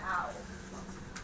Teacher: Start out with the ah position, and we transition, and then the off glide would be that oo positioning to make that ow.